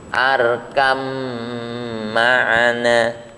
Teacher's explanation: baknya ini sukun, kemudian mimnya hidup, maka sifat baknya ini otomatis hilang, masuk ke mim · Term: mutajanisain